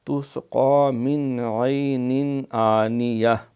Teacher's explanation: حمزہ جو ہے یہ بھی حروف حلقی میں سے ہے، اس لیے یہاں بھی اظہار ہے